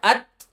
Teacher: ات یہ چھوٹی سی جو ہوا جیسی نکلتی ہے نا اس کو آپ دھیان رکھیں. اس کو کہتے ہیں ہمس